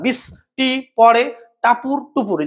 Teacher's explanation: বৃষ্টি পড়ে টাপুর টুপুর, যে টাপুরের উপরে যে জোরটা পড়ছে এটাকে আমরা বলছি শ্বাসাঘাত